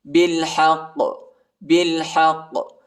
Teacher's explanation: با کو لام کے ساتھ ملائیں گے، الف نہیں پڑھا جاتا، ہا کو قاف کے ساتھ ملائیں گے اور قاف کو جھٹکے کے ساتھ پڑھیں گے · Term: حروف قلقلہ